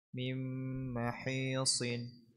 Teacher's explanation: Nun sakinah mudghamah fi mimil maftuhah bi gunna harakatain